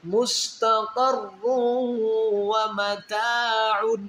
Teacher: دو پیش کی تنوین کے آگے حروف یرملون میں واو ہے، تو واو کے اندر ادغام کریں گے یعنی غنہ کریں گے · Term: ادغام والا غنہ